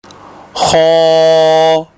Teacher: اگلا حرف خو ہے جو ادنی حلق یعنی حلق کے اس کنارے سے ادا ہوتا ہے جو منہ کی جانب میں ہے